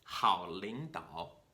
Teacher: how remains a third tone Ling turns into a second